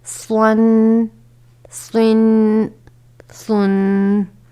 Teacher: صاد، دو زبر سون، صاد، دو زیر سن، صاد، دو پیش سن۔ صاد بھی حروف مستعلیہ میں شامل ہے جسے ہمیشہ پر پڑھا جاتا ہے